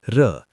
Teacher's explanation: लुंठित जीभ बेलन की भांति लपेट खाती है, जैसे र। उत्क्षिप्त जीभ की नोक झटके से तालू को छूकर वापस आती है, जैसे ड़, ढ़।